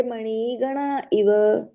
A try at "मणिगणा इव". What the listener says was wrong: मणिगणा इव कर दिया, ये मणिगणा है, ये नी छोटी है।